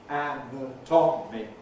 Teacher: we have to have a strong first syllable. And we have this alternation of strong and weak.